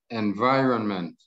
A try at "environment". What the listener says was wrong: No, no tiene ninguna S al final. Environment.